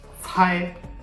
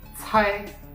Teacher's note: C is pronounced like the TS at the end of tests, and it should be aspirated. Okay, means air should come out of your mouth.